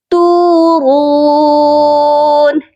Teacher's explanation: تا کے ساتھ بھی واو مدہ ہے اور را کے ساتھ بھی واو مدہ ہے، اسی لیے دونوں حروفوں کو 1 الف کی مقدار لمبا کر کے پڑھا جائے گا